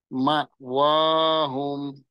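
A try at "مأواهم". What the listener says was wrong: হ্যাঁ, হুমে টান হবে না, মাওয়াহুম।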